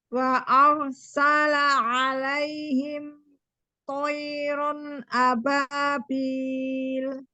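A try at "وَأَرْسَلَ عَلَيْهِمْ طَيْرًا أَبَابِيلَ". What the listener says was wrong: Tonya tipis, tebalkan ya. Toiron alaihim. Ya, tidak terjeda alaihim dengan toironnya. Wa arsala alaihim toiron ababil. Alaihim toiron ababil. Mim sukun itu ketika dia sukun itu tidak terjeda, tapi dia mengalir ya, tapi tidak dipantulkan seperti itu.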